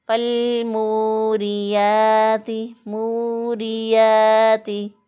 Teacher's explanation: रा के नीचे ज़ेर है तो इसको बारीक पढ़ेंगे